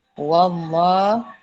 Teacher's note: Lam jalala dibaca dengan 2 harokat, hukum dia tafkhim